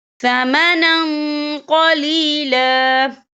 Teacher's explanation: وقف کی صورت میں 1 زبر پڑھا جائے گا، 2 زبر نہیں پڑھے جائیں گے